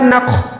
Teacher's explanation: خو جو ہے حروف مستعلیہ یعنی ہر حال میں موٹا پڑھا جانے والا حروف ہے، اور خو جو ہے حروف حلقی میں بھی آتا ہے، یعنی گلے کے اوپر والے حصے سے اس کی ادائیگی ہوتی ہے.